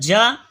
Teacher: جیم زبان کے درمیان اور اوپر کے تالو کے درمیان سے ادا ہوتا ہے